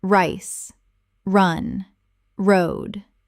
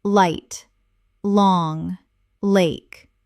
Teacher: the R and L sounds in rice or light. Curve your tongue back for rice. For light, your tongue touches the top of your mouth.